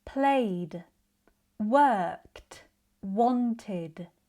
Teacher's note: The endings can sound like d, like in played, t, like in worked, or id, like in wanted.